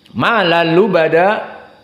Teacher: tanwin bertemu dengan lam tidak membutuhkan makhraj khaysum. Sehingga malal lubada tidak ada makhraj khaysum dan tidak ada gunnah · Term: idgham bila gunnah